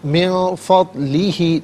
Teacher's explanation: نون ساکن کو اخفا کے ساتھ پڑھیں گے، ناک میں آواز لے جا کر گنگنانا اسے اخفا کہتے ہیں